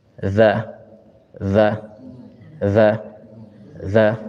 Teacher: lisannya itu keluar ke ujung ee gigi seri atas jadi dia keluar dan dikliknya itu di sini gini dza dza